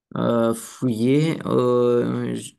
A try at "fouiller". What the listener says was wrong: Fouiller, pas fuyer, fouiller.